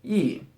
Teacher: with the man radical on the left side this is pronounced e with a fourth tone · This is pronounced yi with a 4th tone, and it means 100 million.